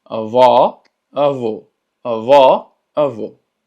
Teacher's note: Y avó tiene el acento circunflexo, lo que hace que la pronunciación sea cerrada.